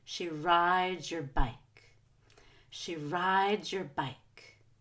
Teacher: make sure ride is higher pitched and more stretched out than the word you're